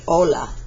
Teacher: An H in Spanish is silent.